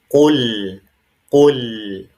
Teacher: Qul ya bukan qul pakai kaf tapi harus pakai qof. dan dia berharakat dommah, maka posisi bibir kita itu harus monyong, sempurna